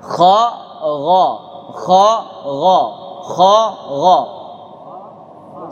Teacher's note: Kalau kha sama makhrajnya dengan ghain, tenggorokan bagian atas. Dua-duanya di sini.